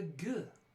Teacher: back of the mouth full stop a voiced velar stop